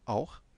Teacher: Il y a une diphtongue, auch, mais bon, c'est A et U, donc auch, schön, nicht wahr.